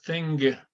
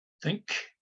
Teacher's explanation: the G is exactly like the K, except it has voice.